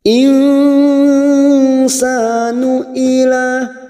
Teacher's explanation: sa fathah diikuti alif 2 harokat kita panjangkan